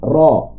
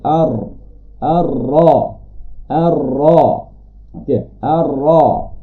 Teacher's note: Ra agak ke dalam sedikit, iaitu pada gusi. Pada gusi bahagian yang hampir untuk naik ke lelangit.